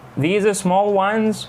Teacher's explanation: Alright, rise in intonation for clarification. Listen to how rise in intonation is used to ask for clarification.